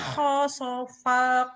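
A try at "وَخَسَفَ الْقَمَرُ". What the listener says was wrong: Kenapa wow sopal? Sin bukan sod. Woho sopol, woho sapal bu. Nana bukan nono Tok tak, bukan dodo. Widodo bukan widodo tapi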